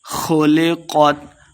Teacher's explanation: خا اور قاف دونوں کو موٹا کر کے پڑھیں گے۔ خلقت آخر پہ ہم وقف کر دیں گے۔